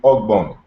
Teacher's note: So instead of saying hbony, it's simply oak bony because the h is dropped